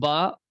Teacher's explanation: با ادا ہوتا ہے دونوں ہونٹوں کے تری والے حصے سے